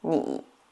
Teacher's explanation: the third tone going down and up is really short. To make it easier for you to understand, you can just go to the very lowest voice.